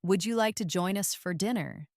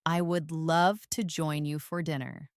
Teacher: First, the question with a rising tone. Would you like to join us for dinner? And now the answer with a falling tone.